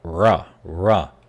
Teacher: the back of the middle of the tongue goes up and back